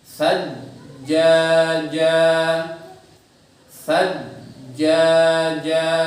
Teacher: Ketika kita masuk ke tasdid tidak ada suara yang mengalir. Mengingat tadi sifat yang pertama dan yang kedua ya, tidak ada nafas mengalir dan tidak ada suara yang mengalir, otomatis berhenti. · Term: jim bertasdid